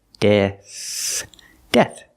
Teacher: With death, we have a TH at the end, making the sound with no voice, just air.